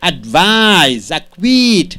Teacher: And coming here, two syllable words, second syllable is stressed. Mostly the verbs, second syllable is stressed.